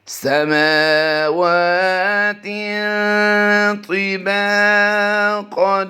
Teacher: میم کھڑی زبر ماں کو لمبا کریں گے، واو کھڑی زبر وا کو لمبا کریں گے، اور آگے با الف زبر با کو لمبا کریں گے، باقی اس پورے لفظ میں کوئی بھی لمبا نہیں ہوتا۔